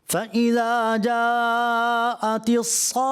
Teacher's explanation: اس میں کم از کم بھی 2.5 سے 3 الف شروع ہوتا ہے، جسے کہتے ہیں کہ مد لازم میں طول ہی طول ہوتا ہے